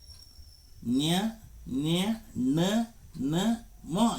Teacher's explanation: ಮೂಗಿನ ಸಹಾಯದಿಂದ ಉಚ್ಚರಿಸಲ್ಪಡುವ ಅಕ್ಷರಗಳನ್ನು ಅನುನಾಸಿಕ ಅಕ್ಷರಗಳು ಎನ್ನುವರು.